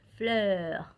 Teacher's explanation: En el caso de la R, por ejemplo, que normalmente alarga el sonido de la EU, va a ser más abierta.